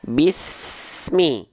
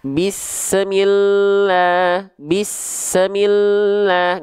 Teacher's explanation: pastikan desisan huruf Sin ini terus mengalir sampai dia melafalkan huruf berikutnya yaitu huruf mim contoh Bismi ah pastikan terus mengalir tidak terputus tidak memantul ya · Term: saofir